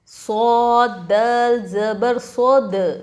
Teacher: دیکھو دال ہے حروف قلقلہ میں تو ہم یہاں پر قلقلہ کریں گے